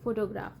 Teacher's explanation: the word photograph, where does the primary stress fall? The answer is first syllable